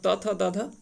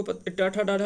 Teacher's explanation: ता था जो होता है वो दंत से होता है, टा ठा डाढ़ा जो होता है वो मूर्धन्य से होता है।